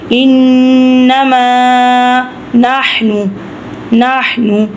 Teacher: یقولا انما، جیسے کہ ہمیشہ کی طرح گنہ ہو رہا ہے، نون کے اوپر جزم ہے تو یہ تشدید ہے، تو اس لیے ہم نے تشدید کو گنہ کرنا ہے، نون کے اوپر تشدید ہے، تو میم کے ساتھ خالی الف ہے، ہم میم کو لمبا کریں گے۔ زبر، پہلا حروف زبر والا، دوسرا خالی الف ہے، تو اس لیے ہم میم کو بھی لمبا کریں گے